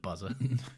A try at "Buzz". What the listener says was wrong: It's not Buzzer, it's just Buzz. Buzz.